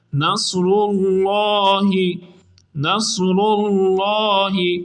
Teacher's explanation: اذا جاء، اذا جاء نصر اللہ، نصر اللہ، نون کو صاد کے ساتھ ملائیں گے اور صاد حروف مستعاریہ میں سے ہے، اس لیے اس کو پر پڑھا جائے گا۔ اللہ کے لام کو پر یعنی موٹا پڑھیں گے کیونکہ اس سے پہلے را پر پیش ہے